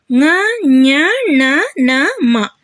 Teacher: ಅಕ್ಷರಗಳು ಇವು ವರ್ಗೀಯ ವ್ಯಂಜನದ ಕೊನೆಯ ಅಕ್ಷರಗಳಾಗಿರುತ್ತವೆ ನ ನ್ ಣ ನ ಮ ಇವು ನಾಸಿಕದ ಸಹಾಯದಿಂದ ಹುಟ್ಟುತ್ತವೆ ಹಾಗಾಗಿ ಇವುಗಳನ್ನ ನಾಸಿಕ ಅಕ್ಷರಗಳು ಅಂತ ಕರೆಯುತ್ತಾರೆ